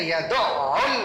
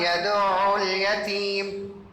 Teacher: بالکل اسموتھ معتدل انداز میں، نہ جھٹکا اور نہ عین گر رہا. عین کے اوپر تشدید بھی ہے، دو عین بھی ادا ہو رہے.